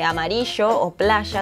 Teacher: En cambio, el reilado es esa fricción en la articulación del sonido, ese sh de amarillo o playa tan rioplatense